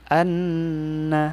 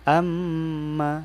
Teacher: nun sama mim kalau dia ditasdidkan itu dialirkan dan dipanjangkan jadi menjadi hunah